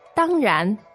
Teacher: the tones there are, first and second